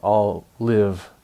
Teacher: All live is a consonant-consonant linking of similar consonant sounds.